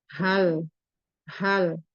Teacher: Tenggorokan di aksal halki. Sifatnya itu hamas dan merkhoa, jadi H. Jadi betul-betul dialirkan huruf sifat hamas dan merkhoanya. Hal. Jadi tidak tebal karena dia termasuk istifal, huruf H. · H di sini merupakan huruf halki. Jadi tenggorokan paling bawah. Tenggorokan di aksal halki.